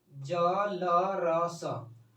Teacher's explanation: अब ये हम लोग का वत्स्य व्यंजन होता है